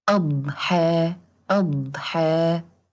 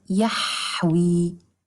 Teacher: The dad is a strong letter, which means that we have a strong collision in its makhraj